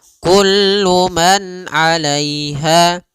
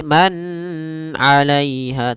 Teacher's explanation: k alaiha pada lafal Kullu di sini ada izhar halqi yaitu suara nunnya dibaca dengan jelas ketika bertemu dengan huruf Ain